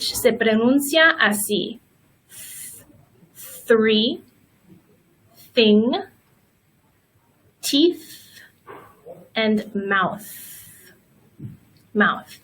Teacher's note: we call the voiceless th and that's because there's no sound in the throat we also have the voiced th and it's the same way